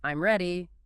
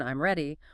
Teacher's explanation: If you say it with a falling tone, I'm ready, it's a statement, >> but if you say it with a rising tone, I'm ready, it becomes a question even though the words are identical. >> It completely changes the meaning and function. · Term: intonation